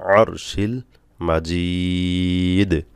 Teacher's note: মাজিদ কলকলা করতে হবে দালে, দালে সাকিন করতে হবে, ওয়াকফ করলে সাকিন হবে পেশে, পেশে ওয়াকফ করলে সাকিন করে পড়তে হবে।